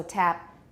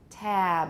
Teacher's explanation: before a voice sound, the vowel gets lengthened. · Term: final voicing